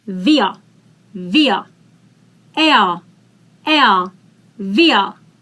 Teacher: We already know that if we have R in the end, we vocalize it.